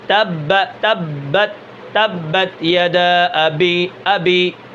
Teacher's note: با کو پڑھتے وقت آواز کے اندر بلندی ہوگی اور سانس جاری نہیں ہوگا